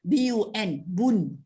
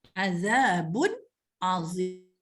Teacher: Jadi bila baca dengan jelas maknanya tanpa dengung. Jadi hukumnya ialah izhar halqi.